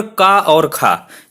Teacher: तो देखिए, अकुह विसर्जनीया नाम कंठ, यानी कि जो का वर्ग की ध्वनियां हैं वो कंठ से रिलेटेड होती हैं, उनका उच्चारण कंठ के माध्यम से होता है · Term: कंठ ध्वनियां